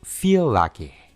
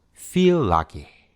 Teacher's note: Puedes identificar que en vez de separar los sonidos y decir feel lucky, simplemente los unimos y los hicimos un poco más largo